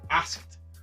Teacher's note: Ask in the past, we put the ed, and the pronunciation is asked with the T sound